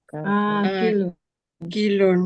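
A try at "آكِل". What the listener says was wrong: Kalau depannya hamzah dipanjangin akilun, bukan akilun tapi akilun. gak ada masalah ya, cuma akala saja hamzah dipanjang.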